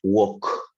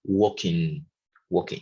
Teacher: como si fuera una O, walking, walking, y no se dice la L